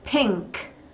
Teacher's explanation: INK에서 요 N의 소리는 응 소리, 우리 NG 소리가 나요. 그래서 응크가 아니라 응크라고 핑크 하고 응 소리, 콧소리를 좀 넣어주셔야 됩니다.